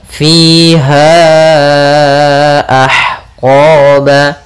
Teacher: Panjangnya untuk mad jaiz munfasil yaitu 4 harokat.